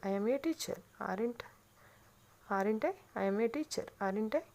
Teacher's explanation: Voice యొక్క range fall అవుతూ raise కావడం. The pitch of the voice constantly falls and the raises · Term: falling raising intonation